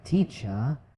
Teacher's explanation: the R at the end of words like teacher or father is often much softer or even silent. So instead of saying teacher, it sounds more like teacher.